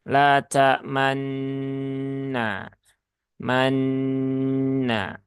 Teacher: Nah, jadi karena di sini tadi ada isyarat domah yang terbuang, maka ketika kita menunaikan gunnah pada nun yang bertasydid ini, nah kita menambahkan isyarat bibir kita yang monyong. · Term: isyarat monyong